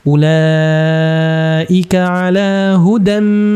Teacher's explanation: hudam masuk ke mim bacaan Idgham bighhunah sehingga kita baca dengungnya ditahan